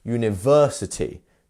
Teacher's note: we have another lengthened sound, which is the ver, which is actually our stressed syllable.